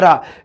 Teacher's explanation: ਕਾਂਬਵਾ ਵਿਅੰਜਨ ਹੈ ਜੀ ਰਾਰਾ, ਕਿਉਂਕਿ ਇਸ ਦੇ ਉਚਾਰਨ ਵੇਲੇ ਜੀਭ ਵਿੱਚ ਕੰਬਣੀ ਪੈਦਾ ਹੁੰਦੀ ਹੈ